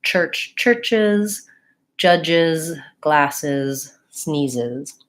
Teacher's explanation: S or a Z very easily to those sounds and so I have to add an extra syllable that sounds like is